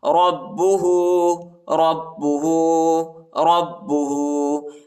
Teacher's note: غور سے سنیں، ابراہیم ربہ، را کو با کے ساتھ ملائیں گے، با کو شدت کے ساتھ سختی کے ساتھ پڑھیں گے اور ہاں پر الٹا پیش آیا ہے، ٹھیک ہے، اس کو ایک الف کے مقدار تک کھینچیں گے